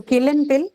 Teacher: both of the words are aspirated because ka and pa they appear in the beginning of the word and they're also monosyllabic.